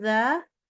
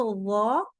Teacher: Tapi waktu wo, pangkal lidah kita naik ke atas. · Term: isti'la